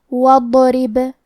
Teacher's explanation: آخری میں با پہ جزم ہے تو یہاں با کا حکم ہے قلقلہ. قلقلہ کا معنی ہے حرف ساکن کو ہلانا تو ہم حرف البا کو ہلاتے ہوئے یہ کلمہ کو پڑھیں گے · حرف را کے نیچے زیر ہے تو یہاں را کا حکم ہے ترقیق. ہم حرف را کو پتلی آواز میں پڑھیں گے. آخری میں با پہ جزم ہے تو یہاں با کا حکم ہے قلقلہ.